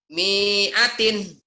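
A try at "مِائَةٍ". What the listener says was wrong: Salah. Kok salah ya? Gak ada yang panjang. Pendek semua itu teh. Mi'atin. Yang panjang itu kalau patahnya dengan alif. Kalau domahnya dengan waw mati. Kalau kasrohnya nih dengan ya mati itulah matobi. Ini kan kasroh.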